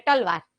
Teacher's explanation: ત નું ઉચ્ચારણ સ્થાન પ્રોપર દાંતમાં જીભ અડે ને તો ત બોલાય, બાકી ત ન બોલાય, ટ જ બોલાય.